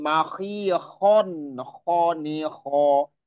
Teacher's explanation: Jangan sampai ditahan ketika khonnya. Karena dia bukan idgham. Jadi nggak ada gunnah. Tanpa gunnah. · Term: izhar halqi